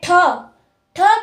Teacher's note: जो ठ की आवाज है वह मुर्धा से ही निकलती है